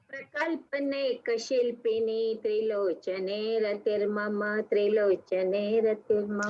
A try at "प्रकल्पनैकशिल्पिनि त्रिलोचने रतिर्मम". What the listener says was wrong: हाँ, वो 3 बार करना है. Correct. Very nice.